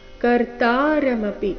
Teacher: ಕರ್ತಾರಮಪಿ ಶಬ್ದದಲ್ಲಿ ತ ಮಾತ್ರ ದೀರ್ಘ